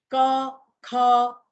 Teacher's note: જીભનો પાછળનો ભાગ ઊંચો થઈને કંઠના આગળના ભાગને એટલે કે કોમળ તાલુને સ્પર્શે અને જે ધ્વનિ પેદા થાય તેને કંઠ્ય વ્યંજન કહેવાય.